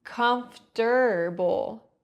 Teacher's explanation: In the word comfortable, the O R often gets reduced